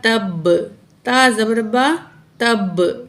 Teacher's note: सख्ती क्यों आ रही है? क्योंकि तशदीद है बा के ऊपर